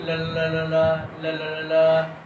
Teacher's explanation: पार्श्विक व्यंजन वो होता है जब जीभ जो होती है, जीभ मुंह में पार्श्व बनाती है, यानी पार्श्व आकार का जीभ मुंह में बनाती है